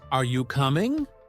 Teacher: we tend to use a rising intonation for yes or no questions